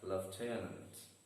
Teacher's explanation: lieutenant, again having 3 syllables and the stress is on the second syllable and the word is read as lieutenant.